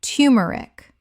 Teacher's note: The first syllable sounds like too, not tur in careful speech, though turmeric is widely accepted.